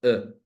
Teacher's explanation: apenas se abre la boca la lengua permanece en una posición neutra no y solo se vocaliza e es la sha no Y